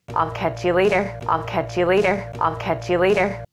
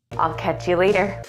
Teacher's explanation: do you hear how the music or intonation Falls after the final stressed syllable it's a falling intonation pattern and it indicates confidence and certainty